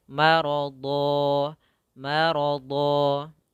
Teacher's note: tanwinnya diganti dengan fathah saja yang menjadi panjang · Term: mad iwad